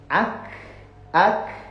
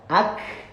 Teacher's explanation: Ketika sukun, hamas itu berdesis dan mengalirnya suara. Ak, gitu ya.